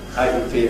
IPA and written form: ˈʌɪʔi (80)